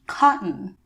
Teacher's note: This sound is produced when you close off air from coming out of your throat and your mouth briefly, and then you release and say the rest of the word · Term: glottal stop